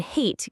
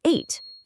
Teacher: Now, what's really interesting about this is how dropping the H changes the meaning entirely. Dropping the H in hate gives you ate, as in eating food. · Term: H sound